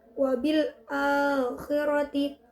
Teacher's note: mad tobi'i pada hamzah berharokat fathah bertemu dengan alif. Cara membacanya dibaca panjang 1 alif atau 2 harokat